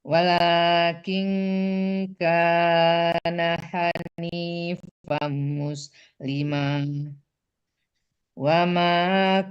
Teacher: Panjangkan ma-nya 2 harakat ya Bunda